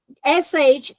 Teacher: sh is called retroflex. Retroflex basically means your tongue goes backwards in your mouth.